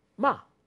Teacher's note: It starts from a high pitch and then falls. Ma. Fast.